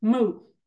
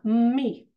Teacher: it with great force and then stop on the M me your lips are retracted more you're smiling more